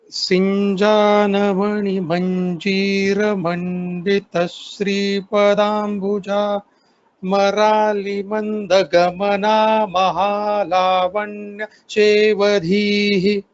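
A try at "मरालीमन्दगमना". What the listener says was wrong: Marali, so there is a dirgha here. Marali mandagamana, you can take a pause after this. So here you have to tell the dirgha.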